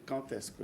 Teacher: nous parlons de quand avec D, mais qui se prononce T.